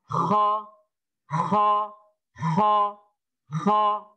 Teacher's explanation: ada ngorok, tetapi dari bagian tenggorokan atas yang belakang